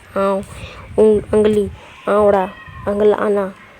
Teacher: अब जो नाक से जो फुरचाते हैं उच्चारण जिसका होता है वो भी 2 प्रकार होता है, बई अरा मुई एड़ो ती फुरचाना आद एन्ने मनी, मतलब मुंह और नाक दोनों से मतलब दोनों से उच्चारण निकलता है